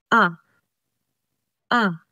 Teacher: Sa wikang Filipino, may 5 ponemang patinig na a, e, i, o, u. Sa a, ang punto ay pasentral at ang antas ng dila ay pababa at ang labi ay di pabilog